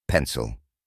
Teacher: Nos encontramos con el shua de nuevo. Recordemos que es un sonido neutro y relajado que aparece en sílabas no acentuadas. Se pronuncia con la boca relajada, sin un esfuerzo particular.